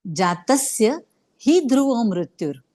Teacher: हा शब्द हेही अक्षर आहे त्याच्या पुढे जोडाक्षर ध्रुव आणि म्हणून ही वर जोर येईल आघात येईल · पहिल्या ओळीमध्ये जातस्य तवर जोर द्यायचा कारण पुढे जोडाक्षर आहे जातस्य ही ध्रुव मृत्यूर तसच ही या शब्दावर पण जोर द्यायला